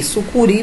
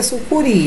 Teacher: então a sílaba tônica está no ri, é uma oxítona